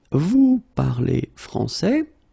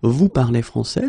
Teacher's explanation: But in many situations, especially when we talk, we can keep the same order, we just need to raise the voice at the end